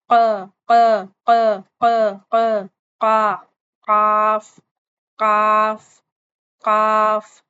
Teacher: हमारी जो जुबान की बैक साइड है वह हमारे कौवे को लगेगी। युविला पे लगेगी और आवाज जो है वह हमारी मोटी हो जाएगी।